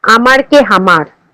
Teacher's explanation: পশ্চিমা রাঢ়ী উপভাষায় শব্দের আদিতে সুস্পষ্ট ঝোঁক বা স্ট্রেসের ফলে কখনো হ ধ্বনির আগমন ঘটে